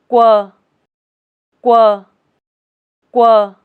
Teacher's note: Open your mouth slightly, round and push your lips forward, without blowing out air.